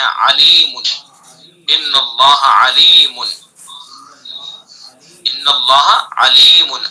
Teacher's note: حلق کے بیچ سے ادا ہوتا ہے، درمیانی حلق سے. وسط حلق یعنی حلق کا درمیانی حصہ، وہاں سے عین کو ادا کرتے ہیں